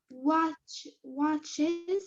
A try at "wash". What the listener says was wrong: Not watch. Wash. No, this is chi or sh.